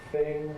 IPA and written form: θɪŋ (thing)